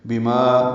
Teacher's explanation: بما ما الف مدہ ہے، دو حرکات لمبا ہے